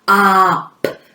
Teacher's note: The first phoneme is an ah, and then the next one is a p, that quiet one.